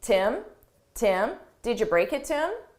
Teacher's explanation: we frequently get rid of the H on him and her at a natural pace, and we connect it to the word before. So it really sounds like im, and then you hear the t from to.